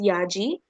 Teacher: As you can see again, the A here as a small dash over it. So the A sound will be elongated into A.